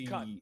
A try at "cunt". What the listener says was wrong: And you said it as cunt. You put so much emphasis on the T. What you meant to say was cunt. That's different.